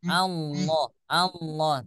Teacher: lafaz Allah jangan masuk hidung